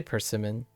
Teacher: second syllable is pitched up